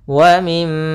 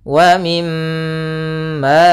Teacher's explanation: suara mimnya ditahan dulu wa mim sepanjang dua harakat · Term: ghunah